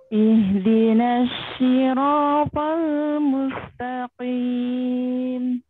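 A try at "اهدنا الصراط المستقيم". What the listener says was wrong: Nanti lihat lagi yang huruf shadnya. Nah, itu kan huruf shin kan? Shad shu. Jadi shu kan? Jadi jangan kena tengah lidah. Ujung lidahnya aja. Pancing pakai huruf S. Kalau lid, pancing pakai huruf S.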